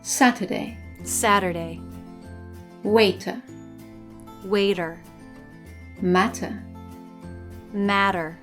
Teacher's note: in American English, when the letter T is in the middle position in a word, it sometimes changes to a soft D. This happens either when it's between 2 vowels or when it's between an R and a vowel.